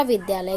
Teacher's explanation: दोनों आ मिलकर के दीर्घ आ होंगे, बड़ा आ हो जाएगा